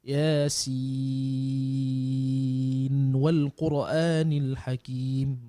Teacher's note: maknanya tanpa berdengung, walaupun dia hujung itu nun mati berjumpa dengan huruf waw, dia ada hukum idgham ya, para jemaah sekalian.